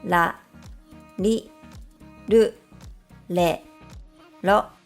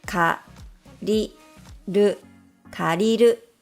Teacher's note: it doesn't sound like the English R. In fact, it sounds like something in between the English R and L sounds.